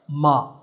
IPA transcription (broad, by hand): mɑː